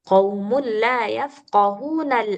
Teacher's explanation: kalau misalkan kita mau wasal daripada la yafqahuna ini mau diwasol dia enggak dibaca lagi hamzahnya maka bacanya lafqahun gitu. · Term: Hamzah wasal